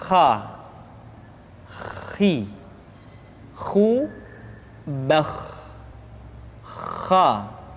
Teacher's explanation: pengucapan huruf kha persis terdengar seperti orang yang tidur dalam keadaan mengorok. · Kha dikeluarkan dari pangkal tenggorokan.